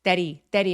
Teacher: 문장 빨리 발음하실 때에는 dady 하면서 h가 없는 것처럼이 t를 모음 사이에 끼어서 굴리듯리 dy리 하시면 돼요